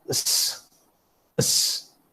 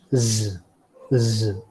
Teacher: while pronouncing s, you find that there is no vibration, and while pronouncing z, there's a vibration. So the sound that has vibration is called voiced, and the one that does not feel vibration or produce vibration is called voiceless.